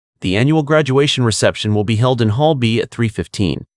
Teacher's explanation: Ensure your voice falls at the end of the sentence to signal a completed statement.